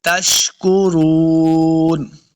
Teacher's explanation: شین پہ سیٹی کی آواز آئے گی، تشکرون۔ را کو پر پڑھنا ہے، رون، را پیش واو، واو مدہ ہے، اس کو 2 حرکات لمبا کر کے پڑھیں گے، آخر پہ نون کو ساکن کرنا ہے، وقف کریں گے۔